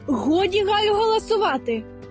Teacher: і вживаємо характерний гортанний звук